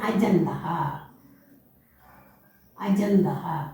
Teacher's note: ച എന്നുള്ളത് മൂന്നാമത്തെ ജ ആയി മാറി